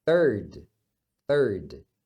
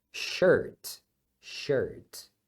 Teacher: quando você vê o IR numa palavra, ela vai ser pronunciada como er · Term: som do er